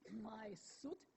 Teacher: my teeth are coming together and my lips are spreading as I'm saying the preceding vowel. That makes the preceding vowel subtly a little bit different.